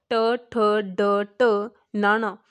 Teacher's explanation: ਤਾਂ ਜਦ ਵੀ ਇਹਨਾਂ ਧੁਨੀਆਂ ਨੂੰ ਉਚਾਰਿਆ ਜਾਂਦਾ ਸਾਡੀ ਜਿਹੜੀ ਜੀਭ ਹੈਗੀ ਹੈ ਉਹ ਥੋੜ੍ਹੀ ਜਿਹੀ ਅੰਦਰ ਵੱਲ ਨੂੰ ਮੁੜ ਜਾਂਦੀ ਹੈ। ਜੀਭ ਜੋ ਹੈ ਉਹ ਅੰਦਰ ਵੱਲ ਨੂੰ ਮੁੜ ਕੇ ਫਿਰ ਇਹਦਾ ਜਿਹੜਾ ਉਚਾਰਨ ਉਹ ਹੁੰਦਾ। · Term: ਉਲਟ ਜੀਬੀ ਧੁਨੀਆਂ